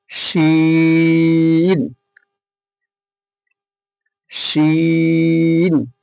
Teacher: জিভের মাঝখান এবং তার বরাবর ওপরের তালুর সাথে লাগিয়ে উচ্চারিত হয় শিন